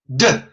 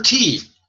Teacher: A D is a voiced T.